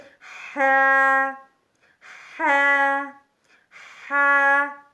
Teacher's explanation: ح حلق درمیانی حصے سے ادا ہوتا ہے، وسط حلق۔ وسط حلق حلق درمیانی حصے کو کہتے ہیں، تو وہاں سے ح ح ح ادا ہوتا ہے۔